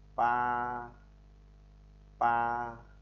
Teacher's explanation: Ví dụ thanh một thì nó đi từ trái sang phải, giống như chữ chữ huyền của mình này, nhưng mà nó lại nằm ngang, đọc là pa pa. Chúng ta đọc đều bình thường giống thanh không của tiếng Việt là thanh cao, là rất đều.